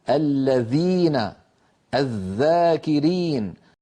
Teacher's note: فالثاء والذال أيضا على القارئ أن يضع طرف لسانه على طرف أسنانه الأمامية وهي الثنايا العليا، ولكن لاحظوا أن مؤخرة اللسان لا ترتفع، فليس ثمة في الذال والثاء ارتفاع لأقصى اللسان · فالذال والثاء أيضا من طرف اللسان مع أطراف الثنايا العليا